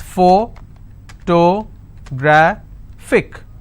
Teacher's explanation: And since it's ending with IC, I will stress on gra.